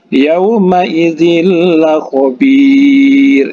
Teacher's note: Huruf lam ini adalah salah satu huruf idgham bila gunnah. Jadi langsung dimasukkan saja.